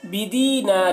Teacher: بدینار، یہاں پر دیکھیے یا مدہ ہے، یا ساکن سے پہلے زیر ہے، یا مدہ ہے، 1 الف کے برابر کھینچ کر پڑھیں گے۔ بدینار، نار یہاں پر الف مدہ ہے، الف سے پہلے زبر ہے، الف مدہ کو بھی 1 الف کے برابر کھینچ کر پڑھیں گے۔